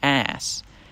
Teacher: there's that weird lengthening of the a vowel